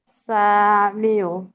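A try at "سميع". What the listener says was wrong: আইন উচ্চারণ হল না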